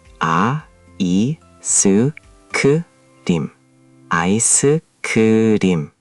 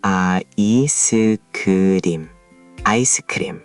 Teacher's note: But notice how there's a little vowel sound inserted. Koreans add a vowel sound after certain consonants because Korean syllables prefer to end with simple sounds.